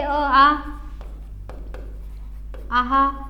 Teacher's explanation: आ ऑ हे जे आले हे एकाच कंठातून एकाच स्थानातून निघलेले उच्चार आहेत